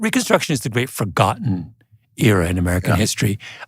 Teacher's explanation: So he leans into forgotten, right? He slows that down, and then he adds a slight pause. He uses the pause as a stress marker.